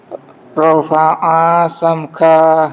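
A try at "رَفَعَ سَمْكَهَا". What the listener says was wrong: Hanya pendek. Rafa'a sam gitu.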